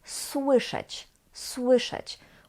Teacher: We've got in the beginning S, which is voiceless, and W, which is a sonorant, but still we just pronounce it słyszeć. The S doesn't become its voiced equivalent, which is Z. No, it is still S